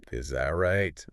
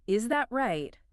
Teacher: The mistake is using a sharp falling tone. If you say, "Is that right?" and your voice goes down hard at the end.